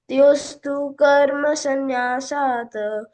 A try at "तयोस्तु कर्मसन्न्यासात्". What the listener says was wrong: अभी तुम तयोस्तु कर्म संन्यासात् है पूरा बोले, तो इसको छोटा बोलना है। तयोस्तु कर्म संन्यासात्